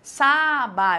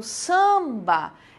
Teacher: um som apenas por isso a gente fala que é nasal porque eu não falo sábado eu falo samba esse som fica nasal